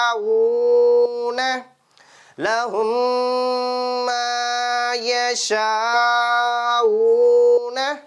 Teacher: மீமுக்கு மேல ஷத்து வந்தாவே நம்ம எப்படி படிக்கணும் இந்த குன்னா பண்ணிதான் படிக்கணும்